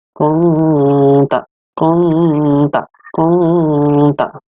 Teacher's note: ada nun mati bertemu dengan ta. Dibacanya adalah ikhfa, yaitu samar-samar.